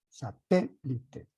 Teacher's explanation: la elevación de voz se encuentra en la ante penúltima sílaba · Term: palabras esdrújulas